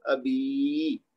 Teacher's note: حمزہ کو ایک حرکت دیں گے لیکن با کو لمبا کر دیں گے 2 حرکت تک، کیونکہ آگے یا مد ہے